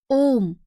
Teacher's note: ग प्लुत स्वर। इसके उच्चारण में ह्रस्व स्वरों की अपेक्षा तिगुना समय लगता है।